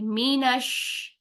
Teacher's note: वो साकिन है और दूसरा शीन जबर के साथ है तो शीन को जब साकिन हालत में अदा करते हैं तो हल्की सी इसमें सांस पैदा होती है और सांस के साथ-साथ हम इसमें फैलाव वाली आवाज लेकर आएंगे